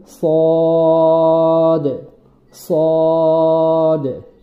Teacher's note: সদ বলার সময় ঠোটটা গোল হবে না নিচের ঠোটটা স্বাভাবিকভাবেই থাকবে একটু মোটা করে বলতে